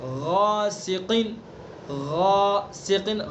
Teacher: ٹھیک ہے، آواز کو جب تک الف ادا نہ ہو جائے جب تک اسی طرح سے منہ بھر کے آواز کو جاری رکھنا ہے